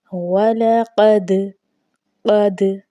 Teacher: چونکہ دال حروف قلقلہ میں سے ہے اور یہ ساکن بھی ہے، گویا کہ ہم نے اس کو جنبش دے کے پڑھنا ہے۔ وَلَقَدْ، قد، قاف کو موٹا پڑھا جائے گا۔